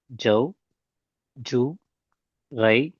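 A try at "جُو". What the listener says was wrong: ஜவ், ஜூ ரெண்டுக்கும் கொடுக்குற timing கிட்டத்தட்ட சேம் ஆகுது. அது போல ஜவ் நாங்க நீட்டாம உச்சரிக்கிறோம். ஜூ நாங்க நீட்ட வேண்டிய இடம். என்று உச்சரிக்கிறதுக்கு நாங்க எடுக்கிற டைமிங்கை விட ஜஸ்ட் கொஞ்சம் அதிகமான டைம் கொடுக்கணும். ஜூ, ரை, தவ், யவ், சவ், ஜவ் எல்லாத்துக்கும் ஒரே டைமிங். அந்த இடத்த மட்டும் ஜூ கொஞ்சம் கூட்டணும்.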